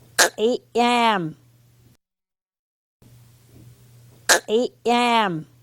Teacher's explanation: Made by pronouncing a Q or K in the throat and at the same time forcing air out while closing your throat for an instant.